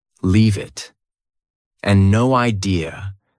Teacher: leave it and no idea both sound like they have no spaces between the words